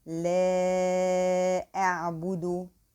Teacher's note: Here we have a prolonging 4 counts because we have hamza after the prolonging letter. So here also the alif carries the wavy sign, which refers to that here there is a prolonging of 4 counts because it's followed by hamza.